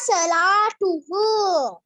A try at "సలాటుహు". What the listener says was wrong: సెలా కాదు సలాటుహు.